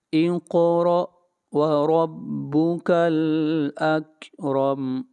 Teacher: یہاں پر را کو موٹا پڑھا جائے گا، وربک الاکرم، را کو پھر موٹا پڑھیں گے۔